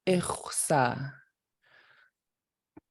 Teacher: what you're doing is just rounding your lips while you breathe out that underline X